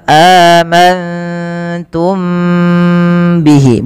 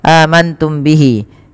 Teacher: mim mati bertemu ba Ini ditahan teman-teman suaranya ditahan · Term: Ikhfa Syafawi